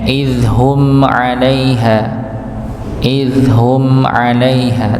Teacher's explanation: Tetap ada dengungnya sedikit, ada alirannya sedikit saja, tidak lebih ya, walaupun tetap dia sebagai dihukumi sebagai idhar syafawi, tetap dihukumi sebagai jelas, dibaca jelas ya.